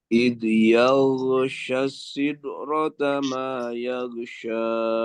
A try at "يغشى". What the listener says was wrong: Nah, ini alirkan yaghsha. Jadi jangan yaga, tapi yaghsha. Jadi perhatian kepada ikhwan sekalian, untuk gha jangan sampai bunyinya menjadi kol-kolah. Jangan yagu enggak, tapi alirkan. Yaghsha.